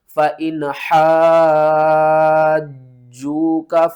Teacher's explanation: جیم کو 2 بار پڑھنا ہے سختی کے ساتھ